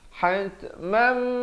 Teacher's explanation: hat ada bunyi hamas, bunyi angin itu